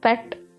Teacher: an unvoiced bilabial and plosive sound